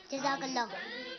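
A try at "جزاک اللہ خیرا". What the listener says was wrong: کیا جزاک اللہ خیرہ پورا.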